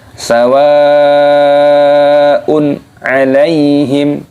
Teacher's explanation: harokat ke faunt teh disini ada hukum mad wajib muttasil yaitu ada Mad yang bertemu dengan huruf hamzah dalam satu kalimat ini dibaca wajib panjang · kalimat ini dibaca wajib panjang sawah Une alaihim Kenapa di sini dibaca jelas tidak berdengung karena ada hukum izhar